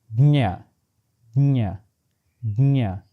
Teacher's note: take your tongue and press it to your palate as you do by saying the sound ja, and end up pronouncing nya